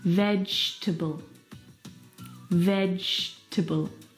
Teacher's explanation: you see the syllable that we completely forget the E vegetable we don't pronounce that second syllable